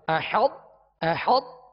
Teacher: یہ حا و طا سے اس طرح ملائیں گے کہ طا کی جو صفت جو پر ہونے کی جو خوبی ہے وہ پہلے ظاہر ہوگی۔ احط، احط یعنی حا طا سے پہلے ملے گی۔